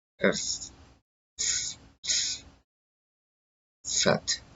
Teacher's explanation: there's no vibration in the throat, makes no sound in the throat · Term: unvoiced consonant